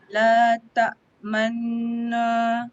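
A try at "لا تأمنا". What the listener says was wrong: Jangan no, jangan. La ta'manna. Okey, la ta'manna. Masa nak sebut na tu dah tak muncung dah. Dia muncung ketika nun mati tu.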